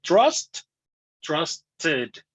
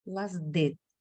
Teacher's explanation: O sea, aunque lleve una ED, suena como ID.